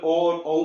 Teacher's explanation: अंतिम जो ओ और औ बच जाते हैं, इन दोनों में जीभ का पिछला हिस्सा काम करता है, तो ये क्या होगा, पश्च।